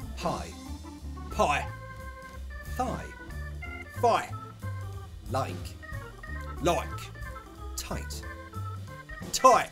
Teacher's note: Words which have the I sound, we don't say them like I. We say them like oi.